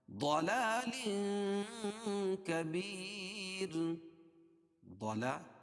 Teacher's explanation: ضلا ضاد کو موٹا پڑھیں گے کیونکہ حروف مستعلیہ میں سے